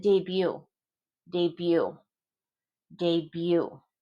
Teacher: So the B is pronounced, the T isn't. We took this from French.